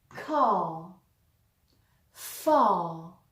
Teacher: Le R anglais, lorsqu'il n'est pas suivi d'une voyelle, sert souvent à rallonger la voyelle qui le précède. C'est ce que l'on voit ici dans car ou dans far.